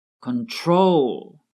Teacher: With control, the stress is on the last syllable